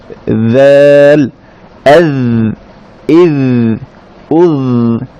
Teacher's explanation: এবং দ্য বলতে সময় আমরা বলেছিলাম যে জিহ্বার আগা একটু ভিতরের অংশ উপরের দাঁতের আগার সাথে লেগে উচ্চারিত হবে